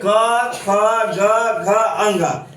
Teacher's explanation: क जो है कंठ से बोला जाता है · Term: कवर्ग